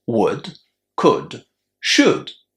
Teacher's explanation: As you can hear, the letter L is silent